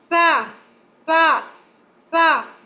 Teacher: Tha, tha, tha blocks the air. There will be no whistling, no whistle in tha.